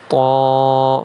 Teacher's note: طا اور ضا کو ایک الف کے برابر کھینچا جائے گا